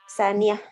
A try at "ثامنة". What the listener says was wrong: Jangan terbalik bacanya. Saniyah. Saminah.